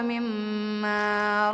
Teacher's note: Cara membacanya didengungkan serta ditahan sekitar 2-3 harokat sebelum menyebut jelas huruf mimnya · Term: gunnah